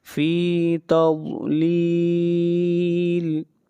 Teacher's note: ضاد حروف مستعلیہ میں سے ہے، ضاد کو موٹا پڑھیں گے اور یہاں پر مد عارض وقفی ہو رہی ہے تضلیل پر، اس مد کو 3 الف کے برابر کھینچ کر پڑھیں گے۔